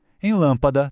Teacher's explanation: Em café, a força está no fé. Em lâmpada, está no lã. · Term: sílaba tônica